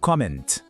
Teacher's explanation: O T no final é mudo, a gente não fala, e o N tem aquele som nasal.